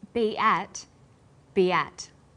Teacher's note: Be ends with the vowel sound e, and at begins with vowel a. Linking these words together with the y sound, we have be at.